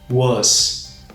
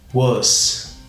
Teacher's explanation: Com esse som de A meio circunflexo, tá? Esse som meio fechado.